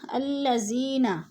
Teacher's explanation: الذین، یا ساکن سے پہلے دال کے نیچے زیر ہے تو ادھر یا مدہ ہو رہا ہے، یا مدہ کو ایک الف دو حرکات کے برابر لمبا کر کے پڑھنا ہے